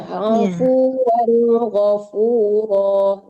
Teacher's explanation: afuwan itu wan-nya itu nggak boleh tertahan karena di depannya huruf izhar. Afuwan harus jelas ya.